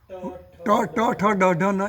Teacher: ઋટુ રસાણામ ટ ટ ઠ ડ ઢ ન એ બધા મુરધ આપણી જીભ છે ને તાળવાના મિડલ પોર્શન પર લાગે મધ્યમાં લાગે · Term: મૂર્ધન્ય